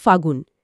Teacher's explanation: ফাল্গুন মাসকে আমরা কথায় প্রায়ই বলি ফাগুন, এখানে লটা লোপ পেল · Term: অন্তর্হতি